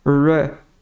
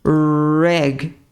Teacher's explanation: E o R em inglês, ele tem um som de R forte. Ele é enrolado, né?